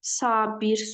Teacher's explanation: Sabir sözündə birinci hecadakı a uzanır